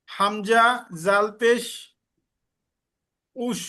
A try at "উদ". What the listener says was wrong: উদ জাল পাতলা হবে, হামজা জাল পেশ উদ। আমি বলে দিচ্ছি, হামজা জাল পেশ উদ, উদ